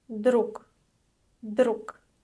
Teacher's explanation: The voiced sound at the end of the word is pronounced as voiceless k.